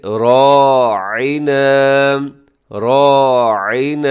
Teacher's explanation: آگے راعنا، راعنا، تھوڑا سا مشکل لفظ ہے کیونکہ اس میں عین ہے، تو اس لیے ذرا اس کو آپ نے کیا کرنا ہے، عین کا جو مخرج ہے وہ ہے وسط حلق، یعنی حلق کے درمیان سے ادا ہوتا ہے